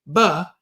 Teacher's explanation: when you say buh, your lips come together and your lips pop apart. · Buh is the loud lip popper because your voice box turns on. P is the quiet lip popper because the voice box is off. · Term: bilabial plosive